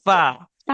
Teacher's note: फा का मखरज ऊपर के सामने वाले दांतों की नोक और नीचे के होंठ के अंदरूनी हिस्से की मिलने की जगह है